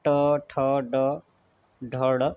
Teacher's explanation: ये मूर्धा से बोला जाता है